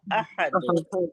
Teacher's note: पहले हमजा की अदायगी होगी फिर हा निकलेगा